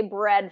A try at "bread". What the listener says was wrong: So what's happening is you're not getting enough your tongue pulled up. So what I'm hearing is that instead of bread with the tongue kind of pulling up here, I'm hearing bread, where there's not enough tongue.